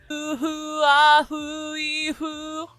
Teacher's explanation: the FH is going to be the softer, more Japanese F that you're used to